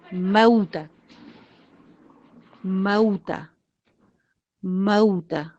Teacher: واو کے اوپر ہونٹوں کو میکسیمم گول کیجئے.